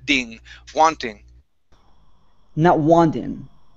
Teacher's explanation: So we want to say wanting. Instead of ting, a really hard T, it's going to be like a D. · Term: flap T